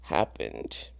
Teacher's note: So it doesn't have a T sound at the end, so it would just be the D sound.